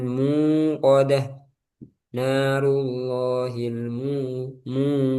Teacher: mu jangan masuk hidung ya karena aljauf mu di rongga